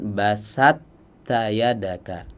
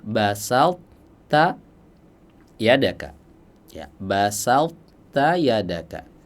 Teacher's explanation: suara tebal huruf th itu masih tersisa tidak langsung masuk ke huruf ta secara sempurna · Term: idgham naqis